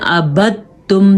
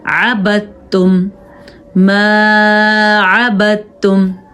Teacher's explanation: دال ختم ہو جائے گی کیونکہ تا پہ شد آ گئی ہے